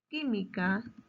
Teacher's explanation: Química tiene la mayor fuerza de voz en la antepenúltima sílaba, qui